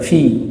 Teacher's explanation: Nah, perut bibir bawah digesekkan.